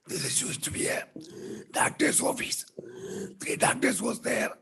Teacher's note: My vocal cord is paralyzed, so it's a hoarse voice.